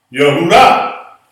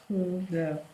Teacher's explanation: The accent is on the last syllable.